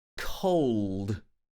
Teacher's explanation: it has the all sound closer to the end the dark l sound